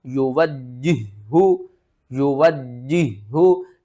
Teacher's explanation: دوسرے ہا کو ہم نے 2 بار پڑھنا ہے اور سختی کے ساتھ پڑھنا ہے